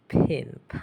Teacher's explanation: p but not much aspiration